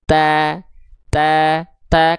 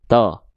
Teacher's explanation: Kalau huruf to, dia termasuk ke dalam huruf yang tafkhim. Artinya apa? Huruf yang dia dibaca tebal. Makanya ketika nanti dia berharokat fathah, vokalnya vokal O kan ya?